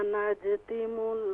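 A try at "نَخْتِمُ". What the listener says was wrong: यहाँ पर नून के बाद खा है, जीम नहीं है।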